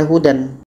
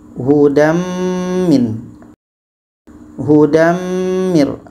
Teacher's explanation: tadi dibaca secara masuk dan dengung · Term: idgham bighunah